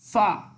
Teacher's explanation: ফা উপরের দুই দাঁত নিচের ঠোঁটের সাথে লাগিয়ে ফা উচ্চারিত হবে